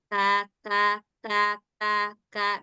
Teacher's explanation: punya sifat hams tadi, maka sedikit ada suara angin